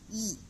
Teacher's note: வாய் திறக்கும் முயற்சியுடன் நாக்கின் அடி ஓரமானது மேல்வாய் பல்லை பொருந்தும் வகையில் பிறக்கிறதுன்னு சொல்றாங்க ஈ அப்படிங்கும் போதும் ஈ ஈன்னு சொல்லும்போதும் ஏ ஐ இதெல்லாம் சொல்லும்போது நம்மளோட மேல்வாய் பல்லும் நாக்கின் அடி ஓரமும் சேர்ந்துதான் வந்து வந்து முயற்சி செஞ்சுதான் இந்த லெட்டர்ஸ நம்மளால ப்ரொனௌன்ஸ் பண்ண முடியுது.